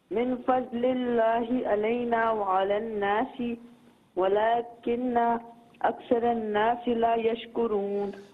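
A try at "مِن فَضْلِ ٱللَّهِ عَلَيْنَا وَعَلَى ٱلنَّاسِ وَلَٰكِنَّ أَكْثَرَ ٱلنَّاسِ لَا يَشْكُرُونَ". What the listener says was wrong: ماشاءاللہ آپ نے پڑھا صحیح ہے لیکن آپ توڑ توڑ کر نہ پڑھیں, ایک لہ میں پڑھیں, ٹھیک ہے؟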